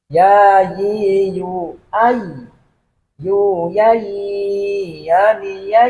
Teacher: masih banyak membaca berbunyi suara E tapi yang betul kaitannya bersuara I